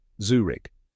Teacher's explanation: It's spelled Z-U-R-I-C-H. But remember, no CH sound at the end